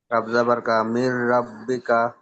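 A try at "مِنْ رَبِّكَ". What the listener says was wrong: মাশাআল্লাহ, খুব সুন্দর হয়েছে।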